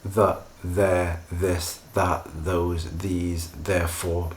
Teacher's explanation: begin with the uh with the voiced uh dental fricative